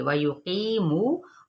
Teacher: वाव मद्दा हो रही है, तो यहाँ पे एक अलिफ या फिर दो हरकत के बराबर खींचेंगे